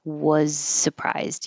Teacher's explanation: You don't have to have a lot of voicing for the was.